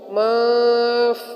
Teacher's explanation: منفوش یہاں پر نون ساکن ہونے کی وجہ سے اخفا ہوگا